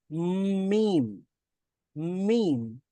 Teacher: তারপরে যদি আরেকটু চাপ দিয়ে, ঠোঁটটাকে আরেকটু চাপ দিয়ে সাউন্ডটা বের করি এবং কিছুটা সাউন্ড আমরা নাক দিয়েও বের হয়, নাক দিয়েও বের করি, তাহলে উচ্চারিত হবে প্রথমে মানে নাক দিয়ে বের হচ্ছে, তারপরে মুখ দিয়ে বের হচ্ছে